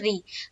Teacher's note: القا، ری کو جلد ادا کریں گے کیونکہ را کے نیچے زیر ہے، اور اسے ہمیں کیا کرنا ہے؟ معروف پڑھنا ہے، مجہول آواز سے بچنا ہے، یعنی کہ را زیر رے نہیں، را زیر ری۔ را زیر رے اگر کوئی پڑھتا ہے تو یہ ہے مجہول، ہمیں پڑھنا ہے را زیر ری۔